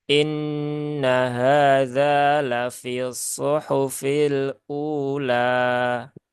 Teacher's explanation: ketika wakaf ya dibaca panjang dua harakat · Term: mad badal